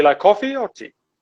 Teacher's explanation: we'll have rising intonation in the first one and it falls on the second one